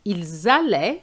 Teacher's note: Ils allaient, so that is a linking, you know, you do a link between an S and an A, which is the liaison.